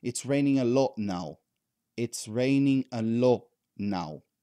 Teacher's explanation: if you cut that t from the word lot that's still okay because this is intelligible understandable and many native speakers do this as a matter of fact they say it's raining a lot